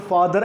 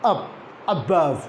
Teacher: This schwa is represented in this word father at the end.